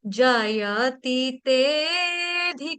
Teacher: जब हम गाते हैं तो हमने अ नहीं बोलना है। अ का उच्चारण नहीं होगा। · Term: अवग्रह